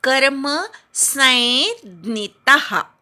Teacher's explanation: आता य आणि ज्ञ हे जोडलेले जरी असले तरी ते जोडाक्षर नाही. स वर अनुस्वार आहे, त्या अनुस्वाराचा पुढे ज्ञ आल्यामुळे य असा उच्चार झाला, म्हणून ते जोडाक्षर नाही, अनुस्वाराचा य झालाय, म्हणून इथल्या स वर आघात येत नाही. · क वर आघात, स नंतर य असा उच्चार करायचा.